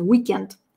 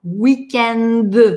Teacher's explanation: Но несмотря на то, что и в русском тоже есть этот weekend, мы произносим глухое «т» на конце – weekend. А нам во французском везде нужно звонко – weekend. Д.